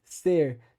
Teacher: o R retroflexo, que marca, por exemplo, de alguns lugares de Minas Gerais, ou daquele chamado R caipira, paulista caipira, vamos dizer assim, que é um R que joga a língua lá para trás.